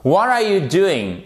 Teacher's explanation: Pour les questions ouvertes, celles auxquelles on ne peut pas répondre par oui ou par non, vous avez une intonation descendante.